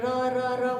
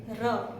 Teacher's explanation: नहीं, र मूर्धा कहाँ, जीभ तो ऊपर लग ही नहीं रही है बिल्कुल भी। र दंत मूल, र हमारे दांत के मसूड़े के साथ लग रहा है